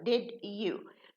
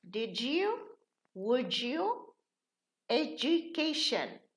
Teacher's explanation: So, when we have a U, the D changes into ja.